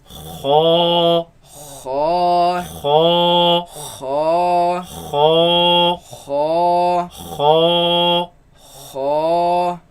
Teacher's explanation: You can feel it in the back of the mouth. It comes from the roots of the tongue, root of the tongue against the uvula